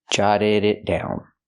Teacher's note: The T in it is a stop T before the consonant